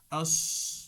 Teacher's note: সদে মোটা শীষ বাতাস সহ, আস জিহ্বার গোড়া উঁচু করে দিতে হবে